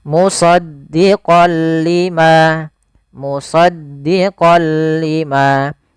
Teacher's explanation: Suara nunnya kepada huruf lam, tapi tidak boleh disertai dengan gunnah. Maka dinamakan dengan idgham bila gunnah, hanya masuk saja. · Awalnya kalau kita baca musaddiqan, karena bertemu dengan huruf lam, tanwinnya masuk ke huruf lam. Suara n-nya dihilangkan menjadi diganti menjadi huruf lam.